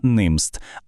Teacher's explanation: Голосна е стала коротким звуком і. І, до речі, зверніть увагу, тут навіть приголосний змінився з хамім.